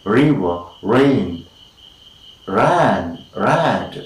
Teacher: So this is in fact post-alveolar. The tip of the tongue is just lifted towards a place after, behind, post or after the alveolar, and we say river, rain, ran, rad, alright, and it's known as post alveolar, so also it is known as post alveolar frictionless continuum.